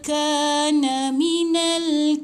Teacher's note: ka panjang ada 2 harakat, ada alif kat lepas ni.